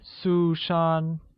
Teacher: pronounced with two high level tones